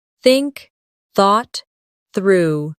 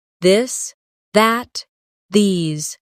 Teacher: Put your tongue between your teeth and push air out for think. For this, your tongue touches the same position but with your voice turned on. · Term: th sound